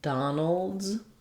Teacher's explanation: We're going right from the n, don, nol to the L sound. It's a syllabic L. If there's any vowel there, it's going to be a little light sound, a little schwa, no, Donald's.